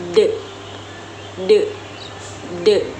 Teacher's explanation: Huruf Dbentuk dengan menggunakan lidah dan gigi atas serta menghasilkan suara yang bersuara atau disebut letup alveolar